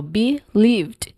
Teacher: Now here in believed um the whole word is not stressed. The second syllable is the stressed syllable here which is the le which is lived.